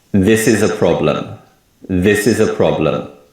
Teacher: When we say this sentence, we put more emphasis on the word this and the first syllable of problem. And other words and syllables become weak sounds. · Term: stress